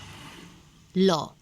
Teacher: जिह्वा का स्पर्श दंत से होता है।